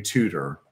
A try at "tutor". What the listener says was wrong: Because you say it like it's T-U-D-O-R, a tutor.